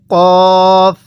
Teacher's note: কফটা উচ্চারণ হবে জিহ্বার গড়া ও সেই বরাবর উপরের তালু হইতে